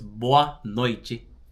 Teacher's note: whenever you're pronouncing the T next to an E, it's usually gonna make a ch sound. So it's boa noite.